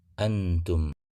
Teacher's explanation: kita baca bunyi an nya dengan samar dengan ujung lidah sudah bersiap-siap di kita yaitu di Pangkal gigi atas atau gusi dari atas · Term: ikhfa